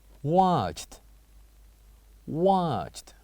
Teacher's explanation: these verbs are the kind of verbs that has the same letters, E and D ends, but with different sound, the sounds of T at the end of each of them